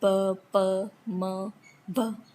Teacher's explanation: bilabial. Both lips come together